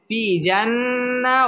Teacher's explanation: ফি জেরের বাম পাশে জজম ওয়ালা ইয়া মদের হরফ এক আলিফ টেনে পড়তে হবে